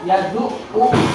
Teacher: ain ya, ain bertasid juga dibaca double